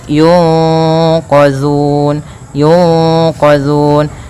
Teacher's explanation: suara nunnya disamarkan kepada huruf q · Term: Ikhfa